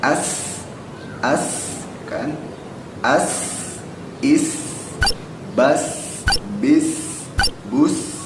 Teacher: Ya, sin itu bentuknya seperti ini. Kalau sin yang seperti ini dibacanya tipis, ya kan, jadi seperti ada senyum-senyumnya.